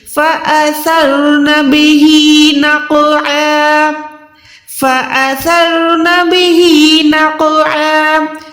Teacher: فَأَثَرْنَ بِهِ نَقْعًا، قاف جو ہے موٹا حروف ہے اور یہ کلکلا بھی آتا ہے، ٹھیک ہے، یہ کلکلا میں بھی آئے گا، موٹا بھی پڑھا جائے گا، عین کو حلق کے درمیان سے نکالنا ہے